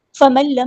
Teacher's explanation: نون ساکن کے بعد ایک لام ہے، ادغام بلا غنہ ہو رہا ہے، ٹائم نہیں دینا ، میم ساکن پہ اظہار شفوی ہو رہا ہے، ٹائم نہیں · میم ساکن پہ اظہار شفوی ہو رہا ہے، ٹائم نہیں دینا